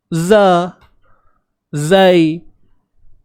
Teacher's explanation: Hujung lidah duduk di belakang gigi bawah.